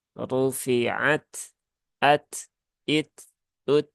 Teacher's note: ada ee hembusan udara kecil yang EE ikut keluar saat huruf Ta ini diucapkan baik dalam kondisi sukun ataupun berharakat